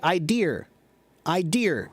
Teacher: It's spelled IDEA, but I often hear British say idea. Idea. There's like an R on the end of it.